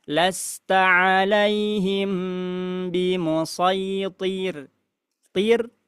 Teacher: Lastaaiim bimusir thir ini pada huruf ro. rnya ketika kita waqaf maka r-nya menjadi menjadi tipis